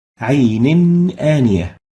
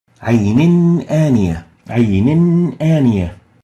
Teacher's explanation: And the rule was that whenever the Ith'haar letters, one of these letters follows the still Nun, the Nun Sakinah or Tanween, the Nun should be exposed where Ith'haar is applied, meaning the Nun should be pronounced clearly without any hiding or exaggerated Ghunnah